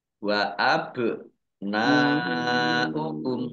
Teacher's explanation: karena bertemu dengan huruf hamzah dalam satu kata maka menjadi mad wajib muttasil dibaca panjang